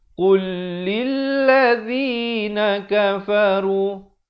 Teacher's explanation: Jadi lam pertama ini seakan-akan tiada pada bacaan. Qaf baris depan terus naik di atas lam yang bersabdu.